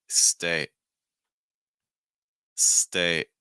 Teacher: we're slightly shortening the vowel sound in that A sound in stay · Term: held T sound